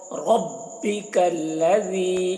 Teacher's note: र को यहाँ पर पुर पढ़ रहे हैं, र को मोटा करके पढ़े हो